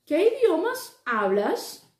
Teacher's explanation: começa a entonação subindo e ela desce